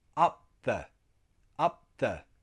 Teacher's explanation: So it's similar to a glottal stop. All the sound in the airway stops on the P.